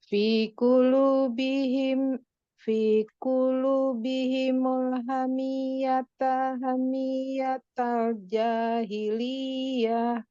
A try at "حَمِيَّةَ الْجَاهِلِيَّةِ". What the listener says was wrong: Jahiliyah, tak ada hi panjang ya. إذ جعل الذين كفروا في قلوبهم الحمية حمية الجاهلية. Kalau mau naik boleh ya, kalau mau datar juga enggak apa-apa.